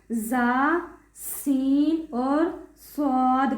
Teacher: زبان کی نوک اور دونوں دانتوں کے اندرونی کنارے سے